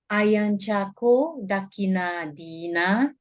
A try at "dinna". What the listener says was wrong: Not dina, dinna. Dinna. Yeah, din. Do not lengthen it because there's no e. It's only it. Ayanchako dakkina dinna.